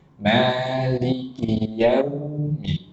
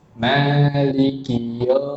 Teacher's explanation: waw sukun ini, ketika dia sukun, suaranya itu harus condong atau mengarah seperti huruf U.